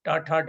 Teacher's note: जिनका उच्चारण कंठ पिटक के पास मूर्धा से होता है इनको मूर्धन्य श्रेणी में रखा गया है